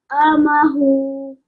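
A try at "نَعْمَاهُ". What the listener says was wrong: Okay, remember, we're going to change the vertical dhamma stroke into sukoon. We're going to change the vertical dhamma into a sukoon.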